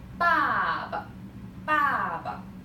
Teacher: You see the toneless, the neutral tone. So try to say it very short.